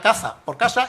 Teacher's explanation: Consiste en pronunciar la letra S con un sonido similar al que le corresponde a la letra Z en las hablas del centro, norte y este de España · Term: ceceo